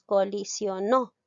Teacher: colisionó lleva la mayor fuerza de voz en la sílaba no es una palabra aguda está terminando en vocal por lo tanto